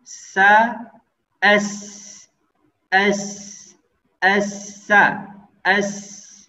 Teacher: Kita contohkan ja, aj, jadi dimatikan aliran nafasnya. Berbeda ketika kita mengeluarkan huruf sin atau sa dalam keadaan sukun. Maka ya huruf ini kita harus berikan sifatnya, ya, yaitu dikeluarkan nafasnya.